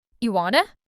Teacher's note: not even do. The do just disappears entirely. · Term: vanishing words